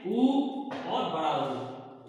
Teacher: ओष्ठ से, मतलब ओठों से बोले जाते हैं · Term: ओष्ठ से बोले जाने वाले स्वर